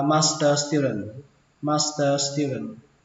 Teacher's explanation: Hội viên, à, học viên chứ, xin lỗi các bạn, học viên cao học đọc là master student. Ở đây âm giờ này với âm sờ này nó nối sang nhau luôn, nên chúng ta tưởng tượng là chỉ có một chữ sờ thôi